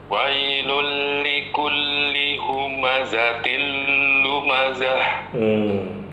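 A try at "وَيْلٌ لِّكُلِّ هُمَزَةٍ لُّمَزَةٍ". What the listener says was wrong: Pada lam bertasydid itu kita boleh menahan tapi jangan terlalu panjang. Wailul likulli, cukup. Jangan wailul likulli, tidak. Wailul likulli humazatil lumazah, gitu ya.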